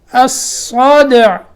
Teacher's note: یہاں دال میں قلقلہ اور عین ساکن، جیسے الرجع ایسے ہی الصدع